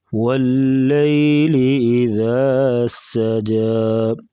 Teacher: ذال کو نرمی سے پڑھیں گے اور سین سیٹی جیسی آواز نکالیں گے۔